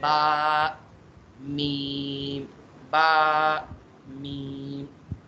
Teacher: बा और मीम किस तरह होते हैं कि उसमें हमारे दोनों होंठ बंद हो जाते हैं